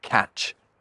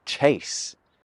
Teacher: The Normans made a k sound where their counterparts to the south made a ch, and they made a ch sound where Central French made a s.